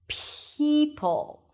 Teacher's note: The P sound is usually aspirated in American English when it appears at the beginning of the word or at the beginning of a stressed syllable as in the word pay. So, it feels like you have a little h right after p. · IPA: pʰeɪ